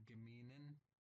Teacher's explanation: So notice how the ZH changes to an N sound.